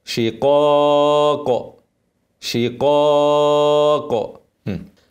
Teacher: افخم القاف والقاف لوفت عليها هقلقلها